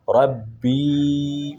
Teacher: یہ یا مدہ ہے، اس کو ایک الف کی مقدار کھینچیں گے۔